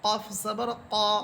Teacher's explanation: কফের মাখরাজ ছিল জিহ্বার গোড়া, তার বরাবর উপরের তালুর সাথে লেগে